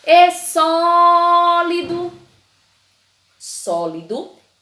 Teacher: a sílaba que eu mais demorei foi um só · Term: sílaba tônica